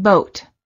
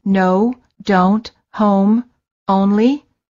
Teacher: the lips are very rounded and tense and the tongue is a bit tense and it moves from the mid High to the high position